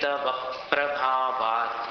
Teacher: तव प्रभावात् ये व पर जोर देना। तव प्रभावात् स्वराघात।